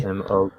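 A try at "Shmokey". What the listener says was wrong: No, Smokey. You forgot the H.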